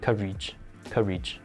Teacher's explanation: The fourth word, courage, the accent is on the first syllable.